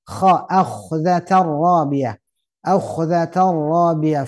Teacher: harus seperti ngorok ya. Karena dia tenggorokan bagian atas kha ada lak-lakan ya. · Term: huruf kha